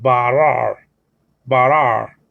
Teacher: the R in Hebrew in the middle of a word, is like you pronounce it by putting the tongue against the roof, the back part of the roof of your mouth